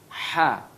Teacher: ya dia memang huruf yang tidak ada dalam bahasa kita Ha dia tempat keluarnya Tengah tenggorokan